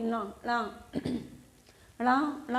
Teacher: अनुनासिक कहलाएगा, क्योंकि इनकी जो आवाज़ हमारी निकल के आ रही है वो नाक और मुंह दोनों को मिलाकर निकल रही है